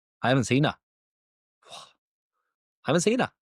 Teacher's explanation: we need to drop these H's and add these schwas in at the same time.